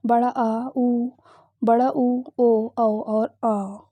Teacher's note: पश्च स्वर यानी कि जीभ के पिछले हिस्से से जो बोले जाते हैं वो क्या है, बड़ा आ, ऊ, बड़ा ऊ, ओ, औ और आ।